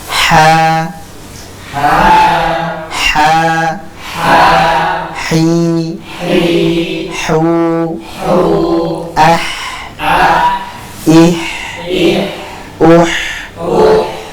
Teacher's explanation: huruf ha ini masih keluar dari tengah tenggorokan atau tenggorokan bagian tengah.